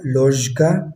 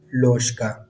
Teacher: لکھنے میں تو یہ لوژکا ہوگا، لوژکا، اور پڑھنے میں یہ لوشکا ہوگا، کیونکہ ژ جو ہے یہ وائس کانسوننٹ ہے اور اس کے بعد کا آیا ہے جو کہ نان وائس کانسوننٹ ہے، تو لہٰذا ہم ژ جو ہے اس کو چینج کر دیں گے نان وائس کانسوننٹ جو اس کا پیئر ہے شا، اس میں چینج کر دیں گے، تو پھر پروننسیشن میں یہ ہوگا لوشکا۔